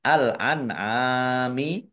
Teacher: Nun sukun bertemu dengan huruf ain, bacaan idhar dibaca jelas.